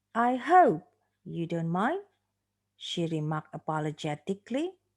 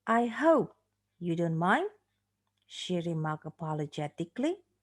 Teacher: we have a special stress of the word hope and we have the final rise on the word mind